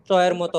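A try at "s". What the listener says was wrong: চ না, এটা স হবে, স। সাপনে, সালাতা।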